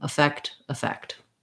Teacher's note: They're both the same, which they both sound like effect, with the stress on the second syllable effect. So the first E or A is a schwa in both cases. You might see it in the dictionary as effect and effect, because typically letter E in an unstressed syllable, we reduce it to an I.